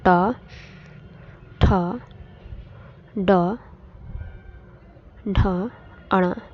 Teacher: मुर्धन्य ध्वनियां अर्थात मुर्धा से उच्चारित होने वाली ध्वनियां है